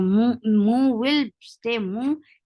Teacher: For dhamma, circle your lips. Don't drop this dhamma on meme when you are creating ikhfa. So mu will stay mu, and then there will be ikhfa after that.